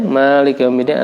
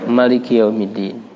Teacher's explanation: ada yang membaca panjang Malikiyaumiddin ada yang membaca pendek Malikiyaumiddin